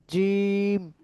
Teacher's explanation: জিব্বার মধ্যখান তার বরাবর উপরে তালের সঙ্গে লাগাইয়া